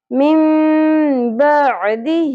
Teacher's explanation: رول ہوگا اقلاب یہ کون سا رول ہوتا ہے جس میں نون ساکن کے بعد حرف با ا جاتا ہے تو نون کی اواز کو ہم میم میں بدل کر پڑھتے ہیں